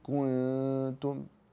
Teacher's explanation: واخفيت النون عند التاء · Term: الاخفاء